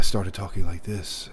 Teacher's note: you hear the airiness, the kind of air pushing over the top of the voice, that would be me speaking off of the voice.